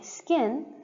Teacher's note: your k here is unaspirated because it is not the stress syllable · when K is the second member of a consonant cluster, immediately following a fricative, it should be unaspirated. So that's basically saying when you have a word and K is not the stressed syllable, it should be unaspirated.